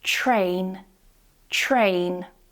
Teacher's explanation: A common problem is that English learners try to pronounce the 't' and the 'r' separately, so in a word like this one, it sounds like t-rain, t-rain cause you're pronouncing the t and the r separately, but what I want you to do is not pronounce them separately.